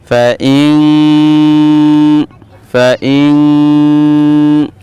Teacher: এই নুন সাকিনের উচ্চারণটাকে নাকের ভিতরে নিয়ে এক আলিফ গুন্না করে পড়তে হবে। সেটা হচ্ছে ইখফা গুন্না।